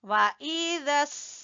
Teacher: ये मद वाजिब है, इसको खींचेंगे।